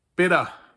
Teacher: in Bavarian, we would say Peter, more like an open ah sound